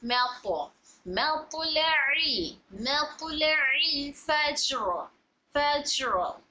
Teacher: मीम light, लाम light, तो मोटा